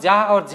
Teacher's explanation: जब हम जा और झा कहते हैं तो ज्यादा झनकार पैदा होती है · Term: सघोष